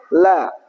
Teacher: Sisi lidah bagian samping ya. Itu menempel di gigi seri atas. La. Itu makhrajnya lam. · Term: huruf lam